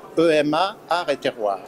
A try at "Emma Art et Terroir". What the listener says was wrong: Alors, on ne dit pas EMA, on dit Emma. Voilà, Emma Art et Terroir.